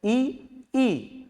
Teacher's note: जैसे ही आपने ई बोली तो आपकी जीभ जो है आगे के दांतों को स्पर्श कर जाएगी। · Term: बड़ी ई